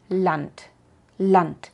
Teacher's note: la d al final de palabras y silabas incluso puede sonar casi como una t de verad una t alemana como en lant lant porque es